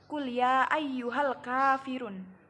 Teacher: Cara bacanya adalah alif lam dibaca jelas, tidak diidghamkan atau dimasukkan ke huruf lainnya. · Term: Idhar qomariyah